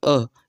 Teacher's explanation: वही अ जो है एकमात्र उदासीन या मध्य स्वर है जिसमें क्या होता है? जीभ का मध्य भाग होता है।